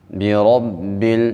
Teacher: جب را کے اوپر زبر آ جائے، را کو موٹا پڑھا جاتا ہے۔ مشدد حرف کو ہم خوب سختی کے ساتھ پڑھتے ہیں، چونکہ با مشدد ہے، با کو سختی کے ساتھ پڑھیں گے۔